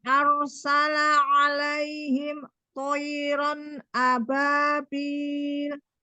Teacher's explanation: tidak terjeda alaihim dengan toironnya